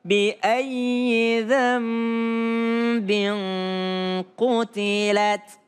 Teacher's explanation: Dambin nun ketemu dengan ba menjadi iqlab. Seakan-akan bunyinya menjadi mim.